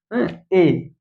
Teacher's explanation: यह कंठ और तालु से दोनों से निकलता है।